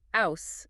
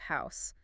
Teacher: Well, with a London accent, you'd typically expect that, that kind of classic Cockney sound, dropping the H at the beginnings of words, like ouse instead of house, and that sort of thing.